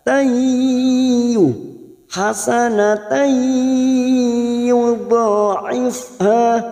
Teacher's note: Wa in taku hasanatai tak marbutoh yang berharokat fathah tanwin bertemu ya idgham biguna masuk ke huruf ya dan ditahan selama 3 harokat